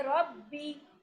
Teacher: با کو تشدید کے ساتھ تو جماؤ کے ساتھ پڑھیں گے.